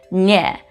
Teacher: the middle of your tongue will push to the middle of the roof of your mouth